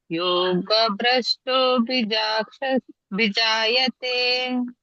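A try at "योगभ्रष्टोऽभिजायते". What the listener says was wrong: ಅಲ್ಲಿ ಎಳಿಬೇಕು ಇಲ್ಲ ಅಂದ್ರೆ ಅದು ಯೋಗ ಭ್ರಷ್ಟ ಅಭಿಜಾಯತೆ ಅಂತ ಎರಡು ವರ್ಡ್ ಇದೆ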